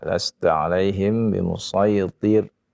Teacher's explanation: Huruf ra-nya yang yang didahului dengan kasrah ya, itu hendaknya dibaca tipis ya, tidak dibaca sama semua ya, jadi tebal semua jadinya. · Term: dibaca dengan tipis